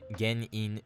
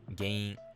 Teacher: The kana is gein, but this word isn't pronounced like that at all. The n gets deleted and the ge basically just extends and nasalizes. So, rather than gein, you get gain.